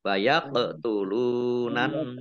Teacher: qaf sukun, bacaan kolkolah, kolkolah dibaca memantul, ditampakkan pantulannya